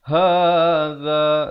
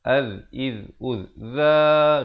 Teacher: Hadza, za di hujung lidah. Az, iz, uz, za, dua harakat.